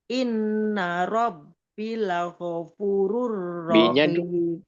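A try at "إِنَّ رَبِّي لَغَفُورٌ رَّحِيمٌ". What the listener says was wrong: B-nya 2 harakat. Inna rabbi. O-nya 2 harakat Bun. Laghafurur.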